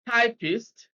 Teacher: typist stresses on the first syllable